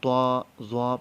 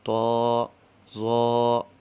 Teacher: غنے کی آواز بالکل نہیں ہونی چاہیے اور ناک میں اس کو ادا نہیں کرنا. تو زو.